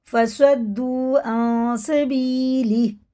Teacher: یا ساکن سے پہلے زیر ہے، کھڑے زیر کی طرح کھینچ کے پڑھیں گے، اور یہ غنہ ہے اخفا بھی.